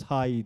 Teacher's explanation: High derken a ve ı'ya giden bir ay şeklinde bir birleşim var. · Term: diftong